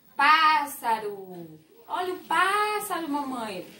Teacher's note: Qual foi a sílaba que eu falei mais forte? O pá.